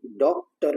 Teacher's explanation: इसमें अ और ओ के बीच की ध्वनि आती है